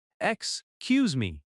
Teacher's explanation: Excuse me has stress on cuse.